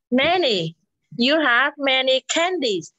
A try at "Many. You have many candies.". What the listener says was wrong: Rất là ổn.